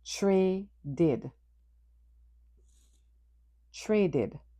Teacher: The final ed is pronounced id.